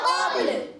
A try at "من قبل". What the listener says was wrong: قبل لام کو نہیں ہلانا، آواز آئی من قبل تو لام کو نہیں با کو ہلائیں گے. جیسے قب قلقلہ ہوا قب، اب لام ساکن رکھنا ہے.